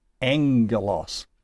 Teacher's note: when we have it in combination with itself as a gamma-gamma, it makes an ng sound. So angelos is alpha, gamma-gamma.